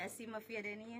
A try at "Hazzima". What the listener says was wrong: Hasima, bukan Asima. Hasima. Hasima Pia Dania.